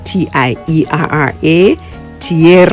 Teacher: two vowels that form one syllable. The sounds slide or glide together